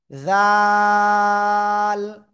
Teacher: জিহ্বার আগা সামনের উপরে দুই দাঁতের আগায় লাগিয়ে এক দুই তিন আলিফ টেনে পড়বো